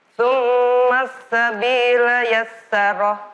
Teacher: Tsumma mim tasdid berdengung. Tsumma sin tasdid tekan.